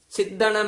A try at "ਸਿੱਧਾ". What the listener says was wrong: ਹਾਂ, ਸਿੱਧਾ ਕਸ ਕੇ ਬੋਲਣਾ।